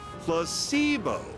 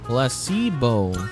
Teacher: The stress is on the middle syllable.